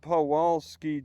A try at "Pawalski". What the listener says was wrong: Pronounce the W as a V.